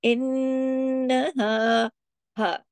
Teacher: دیر تک آواز کو ناک میں چھپایا جاتا ہے نا۔ انہا ہا، ہا کا جو آواز ہے، ساؤنڈ ہے، یہ ادھر سینے کی طرف ہا جاتی ہے، یہ والی آواز گلے سے نہیں ہوتی